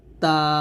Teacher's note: লাগিয়ে তা উচ্চারণ করতে হয় তার সিফাত হলো পাঁচটি হলো হামস হামস মানে হলো বাতাস বের করা অর্থাৎ তা যখন আপনি উচ্চারণ করবেন বাতাস বের করবেন